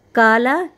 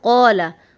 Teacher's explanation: और इस क़ाफ को हम मोटा करेंगे